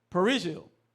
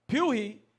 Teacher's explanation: Haitians whose Creole uses a wide, flat R find it difficult to pronounce the trilled R in the Spanish word for parsley